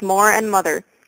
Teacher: Americans generally keep the r sound in most words such as Moore and mother even though the British lost that long ago